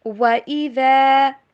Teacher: واؤ کے اوپر ہونٹوں کو گول کیجئے، مکمل طور پر جوڑنا نہیں ہے، انگلش میں جیسے ڈبلیو پڑھتے ہیں ویسے پڑھنا ہے، وی کی طرح نہیں